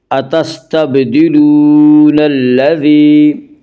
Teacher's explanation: الف کے برابر کھینچ کر پڑھیں گے، اتستبدلون الذی، یا مدہ، یا مدہ وہ یا جو ساکن ہو اس سے پہلے زیر ہو، یا مدہ کو ایک الف کے برابر کھینچ کر پڑھیں گے